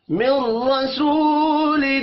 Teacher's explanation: من رسول، مل را کو زبر کی وجہ سے پر پڑھیں گے. رسو واو مدہ ہے، ایک الف کے برابر کھینچ کر پڑھیں گے. تنوین کے بعد حروف حلقی آ رہا ہے، یہاں پر اظہار حلقی ہوگا، غنہ نہیں ہوگا.